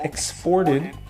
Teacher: When it's a verb, the stress is on the second syllable, exported.